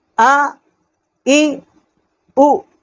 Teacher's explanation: یہ حمزہ ہے، اس کا مخرج جو ہے اقصائے حلق، جو سینے کی طرف والا حلق کا حصہ ہے، وہاں سے اس کا مخرج ہے۔